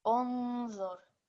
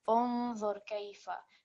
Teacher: So this will be unzur. So it's a sustained nasal sound which you're prolonging, but also the nasal sound needs to come through. Unzur kayfa.